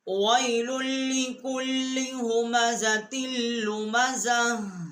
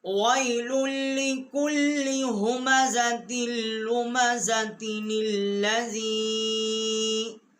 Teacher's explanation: ये हा जो है वक्फ में यहाँ पर हा आएगा, अगर मिलाकर पढ़ेंगे तो ये ता पढ़ा जाएगा, इसके नीचे ज़ेर जो है वो पढ़ी जाएगी।